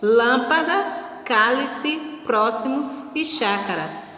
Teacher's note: Agora, proparoxítona, a antepenúltima, exatamente, a antepenúltima sílaba é a sílaba tônica, a sílaba mais forte